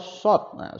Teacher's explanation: short itu kayak orang bersiul jadi bibirnya itu maju tapi agak tertutup